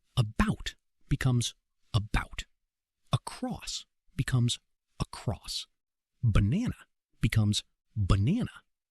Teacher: Because vowel reduction happens in almost every word in fast English, native speakers reduce weak vowels to a single sound called the schwah. It sounds like uh so about becomes about.